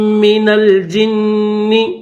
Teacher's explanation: جیم کو نون کے ساتھ ملائیں گے اور غنہ کیا جائے گا